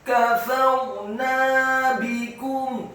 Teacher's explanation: ra-nya dibaca sukun isti'la wa tafkhim, bergetar dan tebal karena sebelum huruf ra yang sukun adalah huruf fa yang harokatnya fathah. Kafarna bikum, kemudian nunnya dibaca tipis fathah 2 harokat karena setelahnya ada alif.